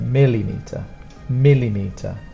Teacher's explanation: we put the stronger sound again on the first and the third